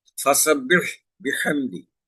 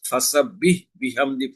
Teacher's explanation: এখানে উভয় ক্ষেত্রে হা আছে, গলা চিপে আদায় করতে হবে